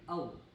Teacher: आपने देखा आपके होठों की शक्ल बिलकुल गोल हो रही है। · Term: होठों का गोल होना